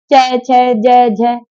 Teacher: च वर्ग होता है हमारा तालु, यानी कि हम इसे तालु से बोलते हैं · जब हम च, छ, ज, झ बोलते हैं, तो हमारी जो जीवा है बेटा, वो दांत के पीछे जाके लगती है, जिस हिस्से को हम तालु कहते हैं।